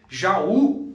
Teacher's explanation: Jaú seria um hiato. O A separa do U, mas está na posição da oxítona, mas é um hiato